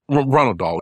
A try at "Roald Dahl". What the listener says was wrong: Roald Dahl, not Ronald Dahl.